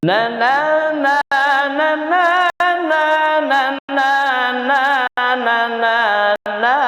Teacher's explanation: nada selingan, awal tinggi, akhir juga tinggi